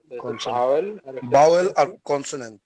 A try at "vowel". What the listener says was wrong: হ্যাঁ, আমরা এটাকে ভাওয়েল বলবো না, এটাকে বলবো ভাউল। ভাউল। এমনি যে শিল্পী আছে গান গায় বাউল, ওটা হচ্ছে বাউল, এটা হচ্ছে ভাউল।